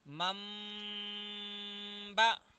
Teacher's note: نون کو میم کی آواز سے چینج کرنا